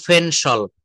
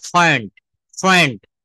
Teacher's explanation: শব্দের শুরুতে পি থাকলে আমাদেরকে সেখানে ফ উচ্চারণ করতে হবে